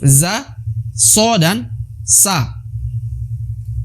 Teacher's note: huruf yang berasal dari ujung lidah bertemu dengan belakang gigi seri bawah